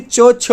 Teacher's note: च, छ जो है दोस्तों ये आपके अघोष व्यंजन है